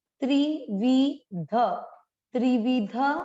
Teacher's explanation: त्र पर छोटी सारी मात्राएं छोटी हैं, आपको लंबा नहीं खींचना। त्रिविध, त्रिविध ऊपर है अनुस्वार, शब्द के अंत पर लास्ट वाले अक्षर पर है तो इसको पढ़ेंगे त्रिविधम, त्रिविधम।